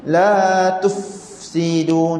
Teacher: masa kita sebut la tufsidu, angin fa kat sini nak bunyi lama, tak nak bunyi tufsidu.